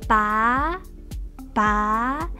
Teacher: The first character, 拔, 拔. Second tone, which means to pull.